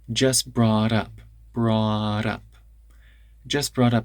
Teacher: Now that T in brought turns into a tap.